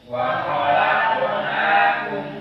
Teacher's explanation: Wa khalaqnakum azwaja. Awas lafaz khalaq harus tafkhim, kha mufakhamah, qaf mufakhamah.